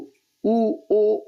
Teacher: जेव्हा आपण उ म्हणतो उ ओ ओ म्हणतो तेव्हा या ठिकाणी ओठाचा ओ तयार होतो असा गोलाकार